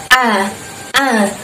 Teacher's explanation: Nah, jadi sifatnya namanya istifal. Lidahnya tidak terangkat, tetap datar, tetap biasa datar di bawah.